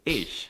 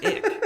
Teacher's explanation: All the cool people in the north half of Germany say ick instead of ich